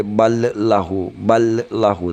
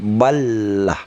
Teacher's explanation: Tidak boleh ballahu, ballahu, tapi ballah. Ini agak menebal karena 2 huruf didegamkan, digabung. Jadi balaghu, hu-nya ini tandanya terbalik, ya dua harkat.